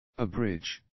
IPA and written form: ə'brɪdʒd (abridged)